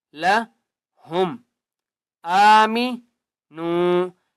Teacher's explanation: حمزہ کو ایک الف کی مقدار کھینچ کر پڑھیں گے